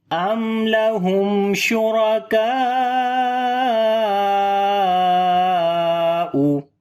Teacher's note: after alif madda hamza is coming in the same word. So this is called madde muttasil, which we long almost 4 to 5 counts. · After the meme sakin there is lam, we make izhar shafavi, the clear sound of meme without gunna.